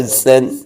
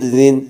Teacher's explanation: زا سیٹی والا ہے اور زال سیٹی کے بغیر ہے